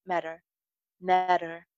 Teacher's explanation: टी जो है ये फ्लैप टी होगा और एंडिंग आर साउंड पे फोकस करना है